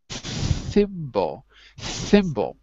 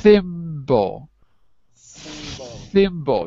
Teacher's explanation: In the word thimble, if you put your finger on your throat, you can feel it's not voiced. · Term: unvoiced